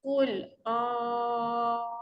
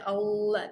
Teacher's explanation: kena tebal. A tu panjang dulu. Slow-slow pergi pada lam.